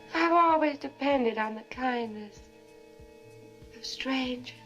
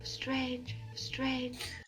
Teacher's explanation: you hear how there's no r in strangers strange strange the plantation on an accent strange that's a non-rhodic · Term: non-rhodic accent